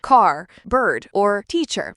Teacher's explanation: The R is always pronounced even after vowels in syllables like car, bird, or teacher. So when you say these words, don't drop or soften the R sound.